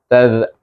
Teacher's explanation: ta digabungkan dengan zzal iaitu keluarkan lidah kita · ta digabungkan dengan zal, iaitu keluarkan lidah kita. Taz, daripada ta tu mahras ta, tadi ingat taz daripada belakang saja, tu antara gigi kacip dengan gusi tadi, pergi kepada mahras zal yang keluar antara gigi kacip dengan belakang hujung lidah.